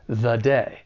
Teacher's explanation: it's unstressed when it comes before the consonant sound in day the day